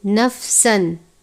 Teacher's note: युकल्लिफुल्लाहु नफ्सन, सीन है हरूफ़े सफ़िरिया में से, तनवीन है, उसके बाद हमज़ा है हरूफ़ हल्की में से। इज़हार का कायदा लगता है, यानी तनवीन पर गुन्ना नहीं करेंगे। नफ्सन सिर्फ़ इतना अदा करना है।